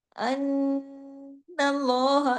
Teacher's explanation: تشدید کی وجہ سے نون پہ لمبا غنہ ہوا اکمل